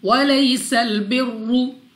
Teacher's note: سین کو سیٹی والی آواز کے ساتھ پڑھنا ہے. را کے اوپر پیش تو را کو اوپر یعنی موٹا پڑھیں گے